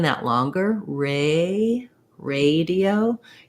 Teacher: we don't have this e by itself in american english we have the diphthong a